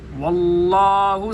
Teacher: لفظ اللہ کا لام موٹا ہوگا, ما قبل واو کے اوپر زبر ہے